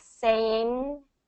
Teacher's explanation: we don't really release the G at the end. We just cut it off in the back.